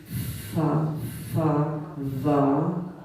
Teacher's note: There are labial dental, lip to teeth